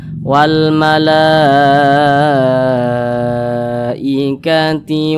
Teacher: Kemudian pada awalnya mad tabi'i, akan tetapi mad tabi'anya berjumpa dengan hamzah nih, tapi masih di satu kalimat atau di satu kata, maka namanya berubah menjadi mad wajib muttasil, panjangnya 5 harokat atau kira-kira 5 ketukan